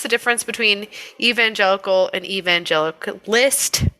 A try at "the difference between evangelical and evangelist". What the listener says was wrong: The syllables are just all over the place here. Well, because the syllables, you're putting the wrong emphasis on them.